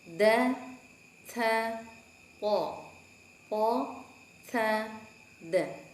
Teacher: Huruf po seperti huruf ta. Di situ seperti da, hanya pangkal lidahnya ditaikan sehingga bunyinya seperti menggema.